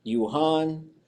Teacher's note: with the accent with the high tone on the second syllable